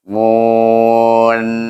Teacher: Mula-mula mu, waw tu kan muncul sikit bibir kita. Mun, baru kita naikkan lidah kita. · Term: makhraj nun